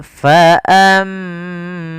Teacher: Di sini ada mim berharokat tasydid, kita baca dengan bacaan gunnah. Caranya adalah menahan suara mimnya